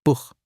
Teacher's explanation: After A, O, or U, it's a throat H, like clearing your throat softly.